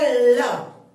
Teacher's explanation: तो ल के उच्चारण में हमारी जीभ अंदर फोल्ड होती है ल, ठीक है। तो हवा जो जीभ के अंदर से दोनों तरफ से हवा निकलती है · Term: पार्श्विक व्यंजन